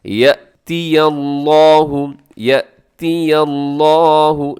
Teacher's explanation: الف ہوتا تو ہم اسے پڑھتے یا زبر الف یا، کیونکہ الف کو نرمی کے ساتھ پڑھا جاتا ہے اور جھٹکا نہیں ہوتا، جبکہ یہ حمزہ ہے. حمزہ کو جھٹکے کے ساتھ آپ نے پڑھنا ہے